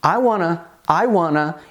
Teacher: Então a gente tem uma pitadinha aqui de reduction em que Eu opto por dizer wanna em vez de want to apesar de estar escrito want to eu prefiro dizer wanna